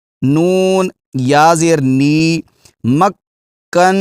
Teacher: نون پر شد ہے، غنہ ضرور کریں گے اور تھوڑی دیر اس کو جما کر اس کو ادا کریں گے